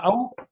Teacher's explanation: जिसमें मुख आधे से ज्यादा खुले वो क्या कहलाता है आपका अर्ध विवृत